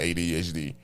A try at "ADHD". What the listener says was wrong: There's no space between ADHD. Why'd you put a pause?